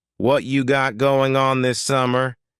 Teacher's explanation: the G and going what you got going on this summer dropping the G and linking what you together